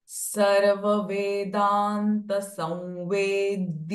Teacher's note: Because the Anuswara is getting followed by V sound. Samvedya. Anuswara sound will become V instead of M.